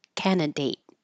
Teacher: We don't say that middle D, just candidate. And hold that final T if it's at the end of the sentence.